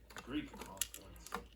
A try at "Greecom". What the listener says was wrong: Greecom, not Greekcom. You said Greekcom, like Greek communication. They're not Greek here.